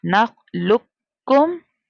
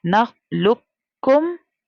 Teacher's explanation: क़ाफ जो साकिन लेटर होता है उसके बाद अगर मुशद्दद लेटर होता है तो हम साकिन लेटर को साइलेंट करते हैं